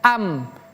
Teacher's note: Tanwin bertemu dengan huruf ba ya. Maka dia berlakulah hukum iqlab namanya. Jadi bacanya bukan an bima ataupun abbima tapi am. Makanya kalau kita lihat di sini pemirsa ada tanda mim kecil di antara dua huruf tersebut ada mim kecil.